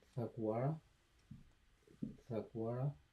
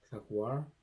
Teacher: at the end, the vowel's gonna drop off, and you're just gonna have the consonant